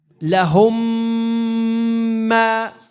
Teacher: This meme is called mutamathilain. So here there's a meme sakin and followed by a meme with the shadda. It merges into one.